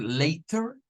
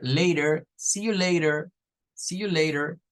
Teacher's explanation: es preferible utilizar lo que vendría siendo un sonido en vez de T como de una r